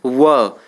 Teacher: व को बोलने में दंत और ओष्ठ का प्रयोग होता है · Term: दंतोष्ठ्य ध्वनि